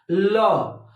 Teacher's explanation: और पार्श्विक व्यंजन का मतलब ये हुआ कि जिन वर्णों का उच्चारण करने पर ध्वनि जीभ के अगल बगल से निकल जाती है उस व्यंजन को हम पार्श्विक कहते हैं